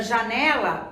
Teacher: ao pronunciá-la conseguimos perceber que o né é pronunciado com um pouco mais de intensidade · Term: sílaba tônica